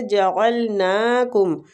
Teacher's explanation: عین وسط الحلق سے نکالیں گے، نون کے اوپر کھڑی زبر ہے اس لیے اس کو کھینچیں گے۔